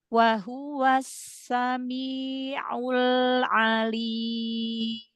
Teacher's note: Tahan lagi lam sukunnya sebentar.